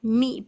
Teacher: می میں جو زیر ہے اس کو باریک آواز کے ساتھ می پڑھنا ہے